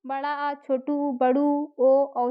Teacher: पश्च स्वर क्या होते हैं? जीभ के पिछले हिस्से से उच्चारित होते हैं।